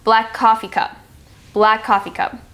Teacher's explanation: with coffee and cup, the E at the end of coffee and then the C at cup blend together as well